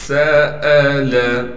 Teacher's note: सीन में सिटी अदा करेंगे।